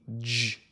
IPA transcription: dʒ